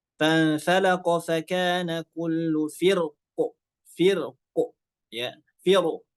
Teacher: فانفلق فكان كل فرق ya, firq ya, roknya ditebalkan ya, roknya ditebalkan, tidak ada khilaf ya, roknya tetap ditebalkan karena bertemu dengan huruf isti'la yang sukun